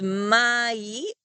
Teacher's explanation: it creates what we call a dipthong and you hear a little bit of ye sound at the end of The Vowel this syllable right here will be pronounced my so it's my